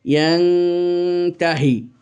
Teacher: নুন সাকিন এর উচ্চারণটা অস্পষ্ট হবে আর গুন্নাসহ হবে। এ প্রকারের গুন্নাটাও এক আকালে বা হারাকাতাইন অবস্থান, কিন্তু এটা ওয়াজিব গুন্না হিসেবে নয়, কিন্তু পরিমাণ ওই একই ওয়াজিব গুন্নার সমানই, হারাকাতাইন বা একালি পরিমাণ। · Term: ইখফার